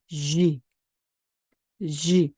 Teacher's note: 입술이 앞으로 쑥 나가면서 목이 울리는 겁니다.